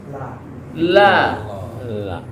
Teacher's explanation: Kemudian masuk di ujung lidah. Ujung lidah bertemu dengan langit atas bagian depan